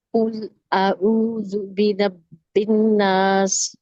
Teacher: برب الناس، اس میں را کو موٹا پڑھیں گے کیونکہ را کے اوپر زبر ہے. نون کے اوپر تشدید آ رہا ہے تو اس نون کو میں گناہ کریں گے، 2 کاؤنٹس اسٹے کریں گے، اور پھر اب اس کے بعد الف مدہ آ رہا ہے تو اس کو 2 کاؤنٹ اسٹریچ پڑھیں گے. · قل میں کاف کو اونچا پڑھیں گے، اور اعوذ میں واو مدہ ہو رہا ہے تو اس کو 2 کاؤنٹ اسٹریچ پڑھیں گے. برب الناس، اس میں را کو موٹا پڑھیں گے کیونکہ را کے اوپر زبر ہے.